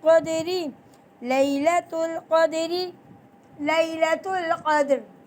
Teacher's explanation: رو کے نیچے زیر ہو تو ہم اس رو کو باریک ہی پڑھیں گے